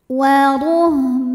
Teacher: Selanjutnya ada hukum idgham, namanya idgham bi gunnah, karena ada tanwin fathah menghadapi huruf waw. Maka bunyi tanwinnya dileburkan atau dimasukkan ke waw disertai bunyi dengung